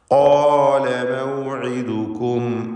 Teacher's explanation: ഖാല മൗഇദുകും, ഖാല എന്ന് പറയുമ്പോൾ ഇസ്തിഅലാൻ്റെ അക്ഷരങ്ങളിൽപ്പെട്ടതാണ് ഖാഫ്. അഖ്സൽ ലിസാനാണ് ഖാഫിൻ്റെ മഖ്റജ്. വ്യക്തമായി ആ ഖാഫ് ഉച്ചരിക്കണം, തഫ്ഖീം ചെയ്യണം.